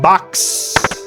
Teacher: In American English, this sound is produced with an open mouth and the tongue long and relaxed. It sounds more like an A sound. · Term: short O